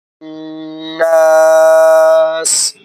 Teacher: دوسرا نون کے اوپر شد آ گئی تو غنہ کریں گے۔ تیسرا نون کے بعد الف آ گیا تو حروف مدہ ہے لمبا کریں گے